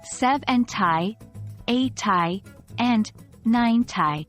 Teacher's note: The tens part is pronounced with a strong emphasis on the first syllable